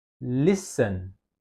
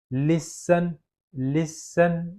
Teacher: yaitu penekanannya itu adalah list